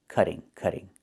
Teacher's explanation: in America, we change the t to a fast d when it's between vowels